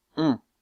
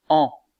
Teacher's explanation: vous sentez que la voyelle on est un peu plus fermée un peu moins ouverte que la voyelle en